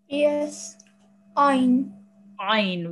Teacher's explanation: From the middle of your throat.